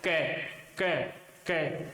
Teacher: यहाँ पर कंठ में जीवा का स्पर्श होगा और श्वास वायु स्पर्श करने के बाद मुख से बाहर निकलेगी।